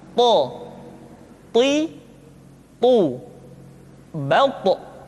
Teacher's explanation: ketika to diucapkan, suara kita terdengar menebal · To diucapkan dengan menyentuhkan ujung lidah dengan gusi-gusi dua gigi seri bagian atas. Sifat yang dimiliki oleh huruf to yang mesti nampak ketika kita ucapkan adalah sifat al-isti'la dan sifat al-itbaq.